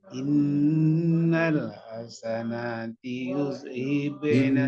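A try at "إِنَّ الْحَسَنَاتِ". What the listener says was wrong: Innal hasanati, jangan lupa nunnya dibaca panjang.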